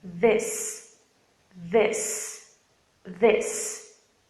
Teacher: Você usa as suas cordas vocais. Se você quiser colocar a mão sobre a sua garganta, você vai sentir essa vibração. · Perceba aí a vibração nas suas cordas vocais. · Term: voiced TH